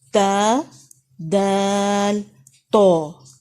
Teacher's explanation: زبان کا سرا ٹپ آف دا ٹنگ سامنے کے 2 دانتوں کی جڑ یعنی روٹ کے ساتھ لگے گی